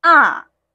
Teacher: the fourth tone going down, ah, very exaggerating